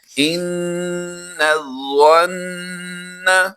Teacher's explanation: خالی ہے، تو اس لام کو ہم ادا نہیں کریں گے، یہ لام اور اس سے پہلے جو الف ہے خالی ہے، ان دونوں کو ہم سائلنٹ کر دیں گے، ان کی آواز نہیں دیں گے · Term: لام خالی